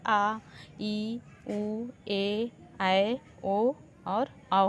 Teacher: अब हम लोग दीर्घ स्वर को देख लेते हैं। इनके उच्चारण में ह्रस्व स्वर से दो गुना समय लगता है।